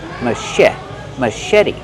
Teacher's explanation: The ch makes the soft shh sound like shoe.